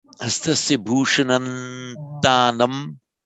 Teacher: The anuswara, the subdotted M, will, in the most correct form of utterance, take on the quality of the following consonant.